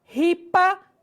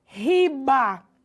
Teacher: A transformação que ocorreu com relação à média surda é que elas passaram a ser sonoras. Então, lembrando que P é uma consoante surda e o B sonora.